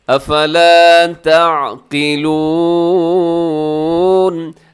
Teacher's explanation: افلا اس کو تھوڑا لمبا کیجیے گا کیونکہ اس میں الف مدہ ہے، اور تعقلون میں عین کا خیال کرتے ہوئے قاف کو لازمی موٹا کیجیے گا.